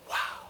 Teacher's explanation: So this time I want you to lean forward just a little bit, get kind of breathy and go, wow